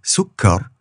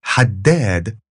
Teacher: you're going to pronounce that consonant extra long. So this is sukkar rather than just sukkar. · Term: shadda